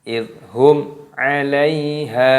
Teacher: Idhum, ada mim sukun bertemu dengan huruf ain, ini hukumnya dibaca idhar syafawi, jadi dibaca jelas, tidak boleh dibaca berdengung. Tidak boleh dibaca idhum alai, tidak boleh, harus dibaca jelas idhum alaiha, ya sukun dibaca alaiha, hanya baca panjang atau bi'i.